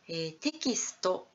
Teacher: テキストになりますと、全部の子音の後に母音がついていきます。 なので割と長い音になりますね。はい、変わって英語読みテクストになると、テの後だけに母音がついていて、キスト、最後のところはですね、子音だけの音になります。はい、こういった母音と子音の量、使う量っていうのが違っているところっていうの